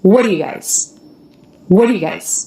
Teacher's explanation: we don't want that up down shape of the voice we don't want the length it's fast